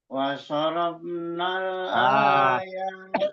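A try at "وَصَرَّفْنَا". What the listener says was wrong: di ro itu kenapa pas kedua Duanya tasdidnya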